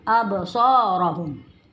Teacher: Absa mat tabi'i 2 harakat. Rohum Absara tebal dan hum harus jelas terdengar